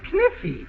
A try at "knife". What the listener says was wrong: No, the word is knife. K is the silent letter. K is always silent in front of N.